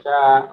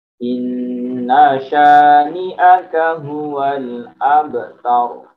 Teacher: Inna sya shinnya tebal hati-hati. Inna sya syanya ini hati-hati panjangnya hanya dua harokat saja.